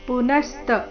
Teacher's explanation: ಪುನಸ್ತ ನ ಮೇಲೆ ಆಘಾತ